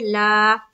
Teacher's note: ला लाम के ऊपर खड़ा जबर है, खड़ा जबर बराबर होता है अलिफ मद्दा के। खड़ा जबर को एक अलिफ की मिकदार के बाकदर खींचकर पढ़ेंगे